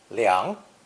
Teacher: with a sound change it's pronounced second tone liang